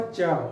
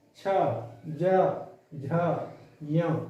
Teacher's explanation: तो देखो जब हम इस वर्ग को बोलेंगे तो जो हमारी जो जीव है, जीवा है, और जीवा का बीच का जो हिस्सा है वो कहाँ टकराता है, ऊपर जाकर तालव्य पर टकराता है।